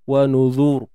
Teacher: Kalau dimatikan ra di makhrajnya macam bunyi tebal. Dia memang akan lebih kepada tebal lah. Sebab sebelum ra tu baris depan. Jadi sebab tu boleh dibaca dua wajah tu.